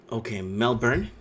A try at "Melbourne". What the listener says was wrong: No, there's no R. It's just Melbourne. It says that there's an R in there, but it's not. That's not how we say it.